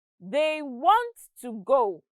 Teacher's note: notice that want and go are stressed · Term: sentence stress